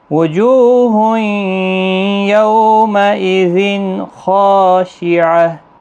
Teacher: یو واولین ہے اور یہاں تنوین کے بعد حرف حلقی کا خا آیا ہے، اظہار حلقی ہوگا، اور خا مستعلیہ ہے، پر بھی پڑھا جائے گا، اور ہا ساکن پڑھا جائے گا وقف کی صورت۔